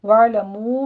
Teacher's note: عین پر جھٹکا نہیں کرنا، عین وسط حلق سے ادا کریں گے